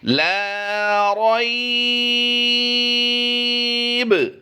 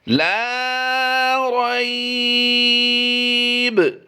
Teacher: اب ہم نے یہاں پر دیکھنا ہے یا لین کے بعد با زبر با کی زبر کو ہم نے جزم سے بدلا، یہاں پر قلقلہ بھی کرنا ہے، اور با ساکن سے پہلے یا لین ہے، حروف لین میں سے یا لین آ گیا تو یہاں پر ہم نے لمبا بھی کرنا ہے اسے